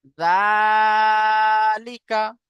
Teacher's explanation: লামের নিচে জের আছে, জেরটি হলো হারাকাত, হারাকাতের পড়াকে তাড়াতাড়ি পড়তে হবে, টান দেওয়া নিষেধ · খাড়া জাবারকে এক আলিফ পরিমাণ টান দিয়ে পড়বো